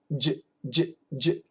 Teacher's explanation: The J we touch, so it can't be long